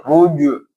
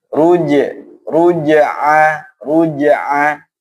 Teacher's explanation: ruj harus meringis, huruf istifal tipis